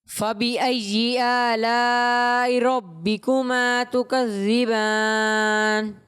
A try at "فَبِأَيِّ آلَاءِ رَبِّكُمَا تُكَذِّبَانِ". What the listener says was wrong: اچھی کوشش کی آپ نے بیٹا، لیکن آپ نے بھی یا کو جیم سے تبدیل کر دیا، جیم کی طرح آواز آ رہی تھی.